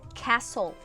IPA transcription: kæsəl